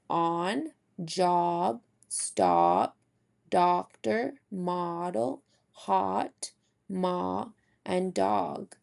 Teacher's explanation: all of those are articulated with an open and wide mouth and lips.